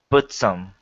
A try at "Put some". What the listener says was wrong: Yeah, I'm not hearing the T. That's what I'm talking about, trailing consonants when you're flowing from one word to another.